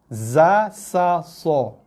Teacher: Okey, hujung lidah turun, sentuh belakang gigi bawah. Hujung lidah menyentuh kawasan belakang gigi bawah, keluarnya huruf zai, sin dan juga sod. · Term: huruf yang berdesir